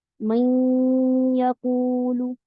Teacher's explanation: کے چلے گئے۔ جب ادغام ناقص کرنا ہے تو اس لیے ضروری ہے کہ آپ کی زبان جا کے مخرج کے قریب ہو، میں کر کے پھر آپ نے آواز لے کے ناک میں جانا ہے